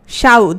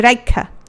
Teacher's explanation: যুক্ত ব্যঞ্জন ধ্বনির আগে ই বা উ স্বরধ্বনি উচ্চারিত হলে সেটাকে আমরা কি বলবো? সেটাকে আমরা বলবো অপিনিহিতি।